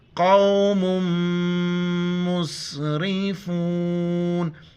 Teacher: میم مشدد ہے، غنہ کریں گے، قاف کو موٹا کر کے پڑھیں گے